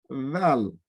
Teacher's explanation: le val on le lit avec le bout de la langue Val il équivaut au D avec un tira en bas donc